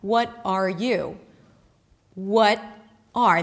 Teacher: The R reduces and connects to the what. But then the T is a flap T, and the R is sort of dropped, and then what you hear is what-a.